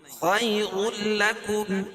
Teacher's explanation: تنوین کے بعد ادغام بلا غنہ کے دو حرفوں میں سے لام ہے، تو یہاں ادغام ہوگا لیکن غنہ نہیں ہوگا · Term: ادغام تام